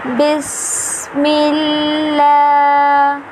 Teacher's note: سین جو ہے نا یہاں ہم نے اسے سیٹی کی آواز میں پڑھنا ہے، یعنی سین کو جو ہے ہم نے سختی کے ساتھ ادا کرنا ہے۔